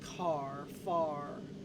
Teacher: we don't sound any final R in words like car far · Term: New England accent